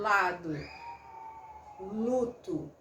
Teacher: a corrente de ar sai pelos lados, por isso que se chama lateral, né? Então, quando eu falo lado, luto, né, esse l, se eu prolongar essa consoante, né, eu percebo que a minha lateral da língua vibra um pouquinho, porque o ar tá saindo por ali, tá?